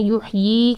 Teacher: یا مدہ کی طرح 2 حرکات لمبا کر کے کھینچ کے پڑھنا ہے، یحیی کر کے پڑھنا ہے.